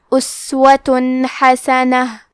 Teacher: اظہار کا معنی ہے ظاہر کرنا، اور کیونکہ تنوین کی اصلیت نون ساکن ہے تو ہم یہاں تنوین ظاہر کریں گے اور اسے نون ساکن پڑھیں گے اور بغیر غنہ سے یہ حکم کو ادا کریں گے · کلمت حسنہ میں حا کے ادائیگی حلق کے درمیان والے حصے سے ہے